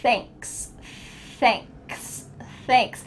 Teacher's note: the TH your tongue is between your teeth and you're also feeling a little stream of air coming out.